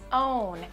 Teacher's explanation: be careful when you're speaking quickly don't add the extra n